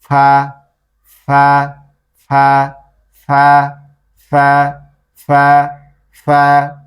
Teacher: নিচের ঠোঁট উপরের দুই দাঁত হালকা করে এখানে লাগবে, মনে হবে কামড় দিয়ে রাখছে